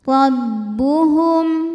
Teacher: yaitu huruf ro cara bacanya mim dibunyikan dengan jelas wasaqohum rabbuhum huruf ro dibunyikan secara tafkhim karena ro berharakat fathah cara bacanya ditebalkan